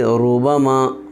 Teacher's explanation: جب را پر زبر یا پیش ہو تو اس را کو پر پڑھیں گے، جیسے ربما را پر پیش ہے اس لیے اب یہ را پر ہوگی